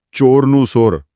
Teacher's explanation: ચ અને છ જેવા અવાજો એ ક્યારેક સ જેવા સંભળાય છે